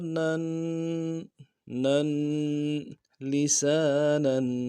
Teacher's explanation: تنوین ہے، غنہ کریں گے اور غنے کو ایک الف کی مقدار میں کھینچنا ہے